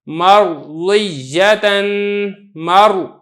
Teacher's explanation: را ساکن ہے، اس سے پہلے میم پر زبر ہے تو آپ را کو پر کر کے پڑھیں گے، مرضیتن، مر، اس طریقے سے آپ نے پڑھنا ہے۔